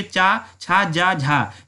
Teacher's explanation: ये 4 व्यंजन को कहते हैं स्पर्श संघर्षी व्यंजन